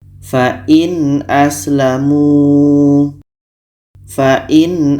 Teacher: Karena a adalah huruf izhar halki, maka di sini kita harus baca jelas. Yang jelas itu adalah nun jelas, a jelas, dan tidak ada dengung.